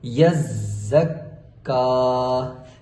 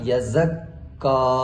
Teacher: زا کے اوپر بھی زور دیا اور کاف کے اوپر بھی زور دیا۔ آپ نے ایسے نہیں پڑھنا یزک کا، اس طرح آپ صرف کاف کے اوپر زور دے رہے ہیں، کاف کو 2 دفعہ پڑھ رہے ہیں، زا کو 2 دفعہ نہیں پڑھ رہے، یا زا کے اوپر سختی نہیں کر رہے۔ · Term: تشدید